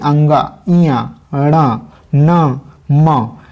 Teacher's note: जिनके उच्चारण में हवा का प्रमुख अंश नाक से निकलता है, जैसे कि अंगा, इया, ण, न, म, ये सभी चीज़ों को जब उच्चारण किया जाता है तो नाक से वायु जो है बाहर निकलने का प्रयास करती है। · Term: नासिक्य